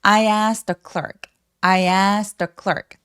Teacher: 자음이 이렇게 많을 때에는 첫 번째 단어의 맨 끝에 T를 삭제해버리고 발음을 안 하는 경우가 많아요.